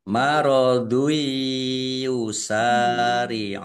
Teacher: Dumah tanwin bertemu dengan huruf ya, bacaan idgham bi gunnah masuk dengan mendengung. Jadi langsung masuk ke huruf ya dan mendengung ditahan biar tampak mendengungnya.